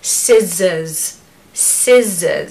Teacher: so it's a z sound in the middle it's not an S